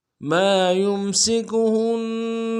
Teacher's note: میم کے ساتھ الف مدہ ہے، الف مدہ کو 1 الف مقدار میں کھینچیں گے